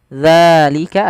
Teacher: ada mad tabi'i, fathah bertemu dengan alif, panjangnya 2 harokat